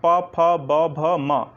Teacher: आपके मुख से निकलने वाली वायु को बाधा पहुंचती है आपके होंठों के द्वारा। आपके होंठ जो है रुक जाते हैं। · पा बोलने में आपके दोनों होंठ पहले सटे, फिर जब मुख खुला तो आपकी वायु कंठ से बाहर निकल पाई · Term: ओष्ठ ध्वनियाँ